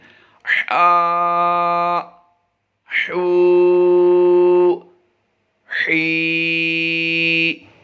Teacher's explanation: یعنی ہلکی سی سیٹی سی کی آواز آئے گی. سیٹی نہیں ہوگی، سیٹی کی سی آواز آئے گی. حلق کے درمیان سے پڑھنا ہے.